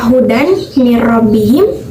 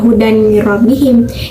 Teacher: karena si kasroh tainya itu melebur ke huruf mim Jadi dimasukkan gitu sehingga dibacanya hudani robbihim itu yang tadi sama